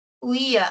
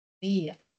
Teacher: hay un hiato entre la I y la A